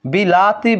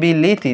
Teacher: স্বরধ্বনির যে আকার ছিল সেটা ইকার হয়ে গেছে কিন্তু নতুন কোন স্বরধ্বনির কিন্তু আগমন ঘটে নাই